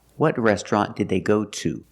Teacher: To is at the end of the question, it's at the end of the sentence. So it's stressed, and we pronounce it to for that reason.